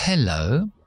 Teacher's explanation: la h en inglés es una consonante fricativa es decir con aire se oye ese aire pero no es Sonora es sorda mis cuerdas vocales no vibran cuando hago la H es limpiar